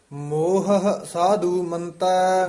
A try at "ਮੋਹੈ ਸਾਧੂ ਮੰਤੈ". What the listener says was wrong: ਮੋਹ ਹੈ ਐ ਬੋਲਣਾ, ਮੋਹ ਹੈ ਸਾਧੂ ਮੰਤੈ।